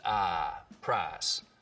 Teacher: Just like we have price smoothing in much of the South, so that I smooths out to just ah, price.